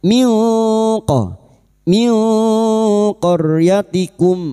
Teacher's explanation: Berikutnya nun sukun bertemu qaf ikfa hakiki kita samarkan bunyi nun sukun dan mendengung selama 3 harokat · ra sukun yang didahului fathah kita baca tafkim